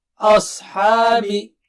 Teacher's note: آ باریک ہے اور صاد بہت موٹا اور اونچا ہے